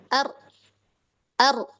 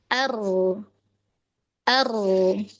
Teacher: Nah, ro-nya ketika disukun itu dia masih tetap ada aliran. Ya artinya dari segi suara dia tawasud.